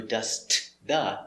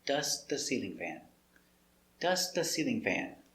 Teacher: When you say dust the sounds go together. You don't hear the t. No, dust the together.